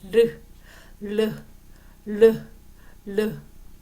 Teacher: 유음은 혀의 양 옆으로 공기를 흘려보내면서내는 소리예요 르 르 르 르 자 르 르 할 때 공기가 양쪽으로